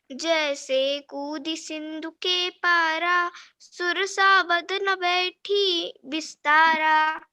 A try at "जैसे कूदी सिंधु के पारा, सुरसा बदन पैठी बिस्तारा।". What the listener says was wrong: सही है, राइट आया।